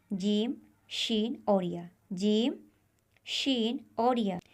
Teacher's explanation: जब हम इन हरूफ को अदा करते हैं तो जबान के दरमियान का हिस्सा ऊपर के सख्त हिस्से से मिलता है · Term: हरूफ शजरिया